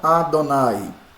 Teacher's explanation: Embora ele tenha um som de A, gente, mas não é vogal, tá bom? É um A bem pequeno, bem curto, brevíssimo. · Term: Shiva composto